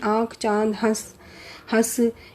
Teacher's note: ये वही स्वर ध्वनियाँ हैं जिनके उच्चारण में हवा मुख के साथ साथ नाक से भी निकलती हैं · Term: अनुनासिक ध्वनियाँ